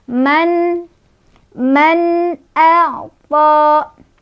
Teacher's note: izhar karena ada nun sukun bertemu dengan huruf hamzah yaitu a ya hamzahnya. Cara bacanya nun sukunnya dibaca secara jelas.